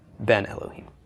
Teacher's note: Bain goes in the construct state and the vowel shortens to a segul